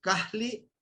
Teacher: sale el aire a los lados no laterales